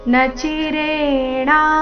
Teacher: ಇಲ್ಲಿ ಧಿ ಮಹಾಪ್ರಾಣ ರಸ್ವ